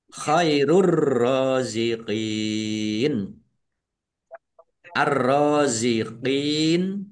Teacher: alif lam syamsiyah karena tidak dibaca langsung masuk ke huruf berikutnya yaitu ro ditandai rnya ada tasdidnya ya.